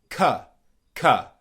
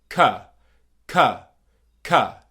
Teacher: So it's not ka, it's ka, ka, ka. Okay, you're making the K sound and you're going straight into the schwa sound